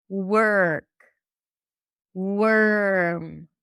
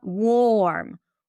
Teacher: you are likely to drop the O completely. So it sounds like you skip the O. That's the stir sound. It sounds like you're going from the W to the R directly.